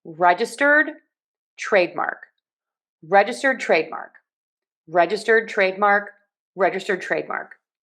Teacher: We have stress on regge and on trade. But the main amount of stress is going to be on registered. So the stress syllable in registered is going to have the most stress in this word.